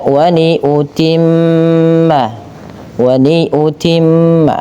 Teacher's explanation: Karena pada lafal tersebut terdapat bacaan ghunah yaitu dengan menahan bunyi suara nunnya atau suara mimnya. Maka waniutimma waniutimma ditahan.